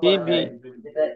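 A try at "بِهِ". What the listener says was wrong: হি বি কেন হবে? আগে তো বা আছে।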